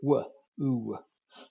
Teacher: oo is a diphthong with a glide at the end of it